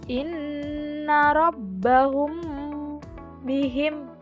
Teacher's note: Hukum bacaan ikhfa safawi yaitu apabila huruf mim sukun bertemu dengan ba. Cara membacanya yaitu dengan suara yang samar antara mim dan ba pada bibir.